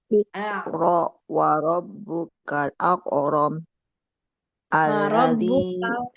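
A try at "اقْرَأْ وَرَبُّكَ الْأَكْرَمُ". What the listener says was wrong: Kalnya Bu. Iqra wa rabbukal dilebarkan kalnya kal. Akram.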